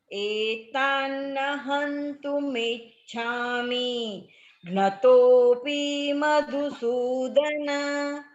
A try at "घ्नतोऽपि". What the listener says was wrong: भगिनी, that p is hrasva. It is coming as dirgham, it's okay, just practice.